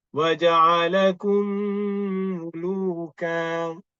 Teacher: Mim bertemu dengan mim. So dia ada wajibul gunnah kat situ, kena wajib kita dengungkan. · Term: Idgham mislain saghir